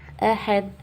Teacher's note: دال پہ ہم جزم لگا دیں گے تو یہاں ہو جائے گا واضح قلقلہ